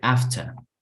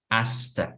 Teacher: Entonces la H desaparece y el to suena más como una A.